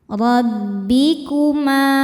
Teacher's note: Ra dibaca tafkhim karena berharakat fathah. Cara bacanya tebal.